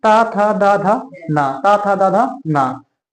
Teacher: हमारा जीभ जो है, जिह्वा जो हमारा है, ये हमारे दांत को टच कर रहा है